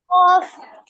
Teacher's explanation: কাফ না, এটা হলো কফ, মোটা আওয়াজে